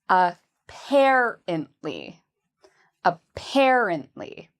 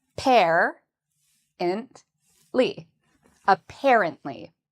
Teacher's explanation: the second syllable is what we say with emphasis. So it's the part we say louder and longer.